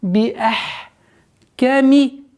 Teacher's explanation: Хамза четко произносим и уходим на гортанный звук с сукуном.